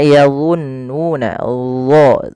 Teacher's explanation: Karena huruf dha ini ada 2 sifat yang paling harus yang melekat padanya. Yang pertama sifat isti'la, yaitu pangkal lidah kita terangkat. Yang kedua yaitu sifat idbaqnya, lidah itu lebih melekat ke langit atas.